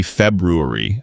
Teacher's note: technically, it's supposed to be February with that first R sound. But honestly, even a lot of Americans drop it and say February because it's just easier to pronounce.